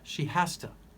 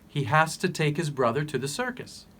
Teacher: the sound for to is softened. So it sounds like ta. To becomes ta.